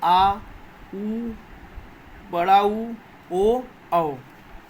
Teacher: पश्च स्वर में जीभ का पिछला वाला भाग ही क्रियाशील रहता है